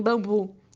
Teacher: Já na pronúncia de A em pá, U em bambu e O em pô, a língua se posiciona na parte de trás da boca, sendo classificada como posterior.